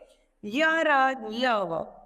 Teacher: दूसरा आता है अंतस्थ व्यंजन। जिन व्यंजनों के उच्चारण में वायु मुख के किसी भाग को पूरी तरह स्पर्श नहीं करती है, अंतस्थ व्यंजन कहलाते हैं। ये संख्या में 4 होते हैं।